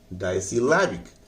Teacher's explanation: डाई पर कम जोर लगाइए, सी पर कम जोर लगाइए, लैब पर जोर लगाइए